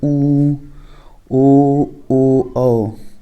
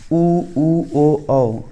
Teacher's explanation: ओठ जो होता है वो गोल आकार का बन जाएगा, वृत्ताकार।